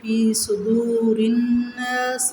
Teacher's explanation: واو ساکن سے پہلے پیش واو مدہ ہے، کھینچ کے پڑھیں گے۔ صدور الناس، نون شدت پہ غنہ کریں گے، الف مدہ ہے۔